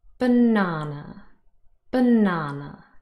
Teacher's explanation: so here we have three syllables and the middle syllable the second one is stressed